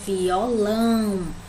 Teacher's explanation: Aqui a gente tem a palavra violão, né? Que a gente já percebe que o lão é o mais forte